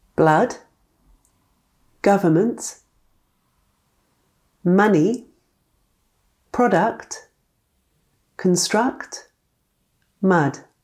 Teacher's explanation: There's a similar sound to a schwa, but this sound can be stressed